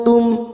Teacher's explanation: semarkan bunyi nun sukun dan mendengung dua atau tiga harakat watum nun sukun bertemu ta Ikfa Hakiki kita samarkan bunyi nun sukun dua atau tiga harakat